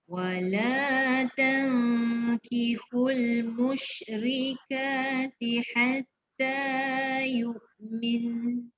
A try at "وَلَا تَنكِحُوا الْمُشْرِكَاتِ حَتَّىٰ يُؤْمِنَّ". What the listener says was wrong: Yu'min. Dengung 2 harakat. Ini kena tekan lama. Sebab dia nun sabdu.